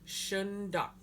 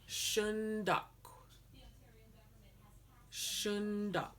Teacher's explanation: we have the W at the end that comes out as a breath